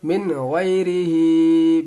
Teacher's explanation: حروف حلقی اظہار کریں گے، من غیر زیر ری، من غیری، ہا کھڑا زیر ہی، اس کو ایک الف کے برابر کھینچیں گے ، کھڑا زیر ہے، من غیری ہی۔ بالکل سمپل ہے یہ،